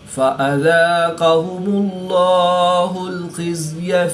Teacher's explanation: اس میں جلالت اللہ عز و جل کے لام سے پہلے میم پر پیش ہے تو اس لیے اس لام کو پر یعنی موٹا پڑھیں گے۔ یاد رہے اس میں جلالت اللہ عز و جل کے لام کے علاوہ ہر لام ہر حالت میں باریک ہی پڑھا جائے گا۔ · قاف حرف مستعلیہ میں سے ہے تو اس کو پر یعنی موٹا پڑھیں گے۔ اس میں جلالت اللہ عز و جل کے لام سے پہلے میم پر پیش ہے تو اس لیے اس لام کو پر یعنی موٹا پڑھیں گے۔